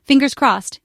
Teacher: When you say it, try to sound light and hopeful. Maybe your voice goes up a little at the end, especially if you're saying it back to someone.